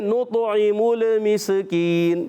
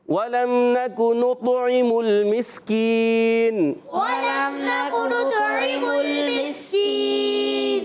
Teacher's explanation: میم کو لام سے ملائیں گے، لام کو ہلانا نہیں ہے